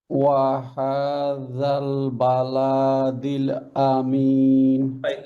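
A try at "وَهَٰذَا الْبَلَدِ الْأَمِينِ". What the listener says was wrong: লাম has নো মান, নো মান। বালা, আপনি মাদের হরফ গুলো আবার খেয়াল করেন, মাদের হরফ তিনটা, আলিফ ওয়াও ইয়া। ওকে, সো ফাতহা বিফোর আলিফ, কাসরা বিফোর ইয়া, দম্মা বিফোর ওয়াও।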